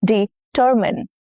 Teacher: Now hint, stress is on the second syllable.